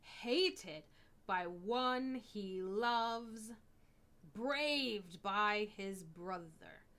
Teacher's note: So, I'm going to emphasize hated, braved, following the word loves. That's two emphasized syllables right next to each other. So that also breaks the rhythm.